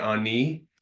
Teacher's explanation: Another thing you might see as a little variation between, say, like a dialect in Curve Lake versus some you see around Manitoulin Island, Lake Huron, is a tendency to drop N's. So that's why you guys are all very commonly saying ani, but in Curve Lake we say anin with an N on the end.